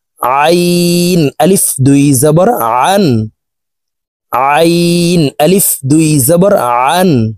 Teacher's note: দেখুন, হলকের মধ্যখান থেকে আইন হরফের উচ্চারণ করব।